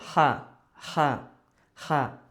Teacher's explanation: আচ্ছা, তো এই যে হাটা মূলত এই যে এখান থেকে কণ্ঠনালীর মাঝখান থেকে উচ্চারিত হবে, 2 নম্বর মাখরাজ। কণ্ঠনালীর মাঝখান থেকে উচ্চারিত হয় হা। তারপর হচ্ছে চাপ দিব আমরা, হা, হা, হা।